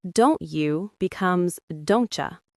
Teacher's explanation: When a word ends in T and the next is U, it becomes a ch sound.